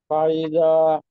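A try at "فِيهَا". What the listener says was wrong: ফাইদা জাতে মাদ হবে।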